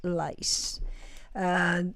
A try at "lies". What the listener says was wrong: lies. Not lice. Lice is piojos.